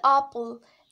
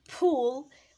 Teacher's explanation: The phoneme p becomes the aspirated p when it occurs word initially.